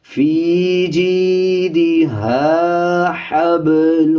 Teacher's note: آپ نے اس میں یہ خیال رکھنا ہے کہ یہ پہلے موٹا ہا یعنی پر پڑھیں گے، اس کے بعد باریک ہا ہے. اکثر لوگ اس کو پڑھتے ہوئے دونوں کو سیم پڑھ دیتے ہیں، فی جیدہا حبل پڑھ دیتے ہیں، بلکہ فی جیدہا حبل ہا پڑھا جائے گا.